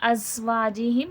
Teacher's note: زا سختی سیٹی کے ساتھ پڑھا جائے گا